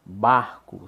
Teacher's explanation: Barco, sílaba tônica, o bar, penúltima, paroxítona.